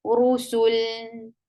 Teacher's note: We'll give sukoon at non-lam. Lam with sukoon will get sifa of tawassut, and tawassut is a medium flow of sound.